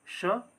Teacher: सबसे पहला है श और इसका उच्चारण स्थान की बात करें तो तालव्य से होता है